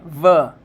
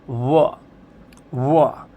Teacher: एक है व जिसमें ऊपर वाले दांत नीचे वाले होठ पे हैं व